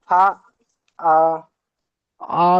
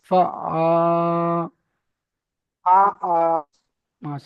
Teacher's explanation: দিকে জাবার এসছে, একে হুম, আলিফ মাদ্দা বলে, আলিফ মাদ্দা বলে, আলিফ মাদ্দাকে এক আলিফ পরিমাণ টান দিয়ে পড়তে হয়।